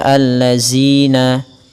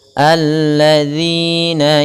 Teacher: Untuk merealisasikan daripada huruf zalnya, ujung lidah kita menempel dengan gigi seri atas.